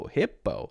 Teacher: that word hippo, clearly has an I and clearly has an O. So it doesn't have any schwa sounds.